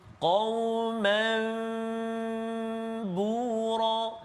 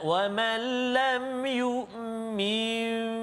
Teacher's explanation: menukar sebutan nun sakinah ataupun tanwin kepada sebutan bunyi mim. Sebutan mim berserta dengan dengung. Berserta dengan dengung kan? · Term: iqlab